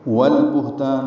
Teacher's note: مدہ ہے، حاشین جلدی ادا کریں، والبہتان لام ساکن پہ اظہار، ہا ساکن پہ ہمس ، تا الف مدہ ہے، نون کی زیر کو جلدی پڑھیں